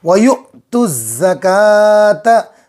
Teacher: حمزہ پر جزم ہے، حمزہ کو جھٹکے کے ساتھ پڑھیں گے۔